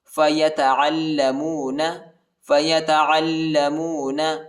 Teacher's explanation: عین کو لام کے ساتھ ملائیں گے اور لام کو شدت کے ساتھ سختی کے ساتھ پڑھیں گے